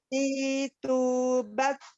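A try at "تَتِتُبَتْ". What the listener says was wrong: Hamesnya masih belum terdengar, Bu. Bukan di kol-kol ya, Bu ya, tapi Di waktu yang bersamaan itu ada nafas yang keluar. Ta-ti-tu-bat. Bat. Jadi ada nafas yang keluar ya. Ada nafas yang mengalir sambil.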